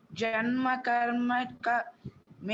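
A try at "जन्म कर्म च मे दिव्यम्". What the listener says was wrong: Cha. No, it is not ka, it is cha.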